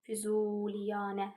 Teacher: Həm U-da, həm də A-da uzanma var.